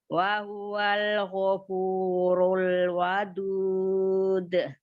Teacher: Runya ditebalkan lagi, ru domahnya